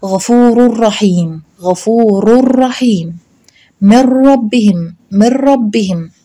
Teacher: بنلغي الحرف وبنلغي صفته، يعني لا بيكون لا في غنة والحرف كمان مش موجود، عشان كده بيسموه إدغام كامل.